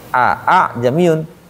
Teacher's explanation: hanya saja Hamzah yang kedua tuh dibacanya samar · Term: tashil